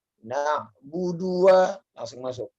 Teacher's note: Langsung disambung. Pendek-pendek semuanya.